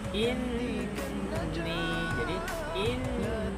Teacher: itu adalah gunnah, itu ditahan 2 harokat, bukan langsung jalan saja.